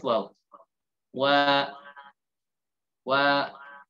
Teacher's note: kedua bibir monyong kan kedepan dengan membuka sedikit celah